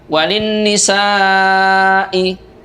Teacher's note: Nisa'i dibaca panjang sampai dengan 5 harokat, disebut dengan mad wajib muttasil.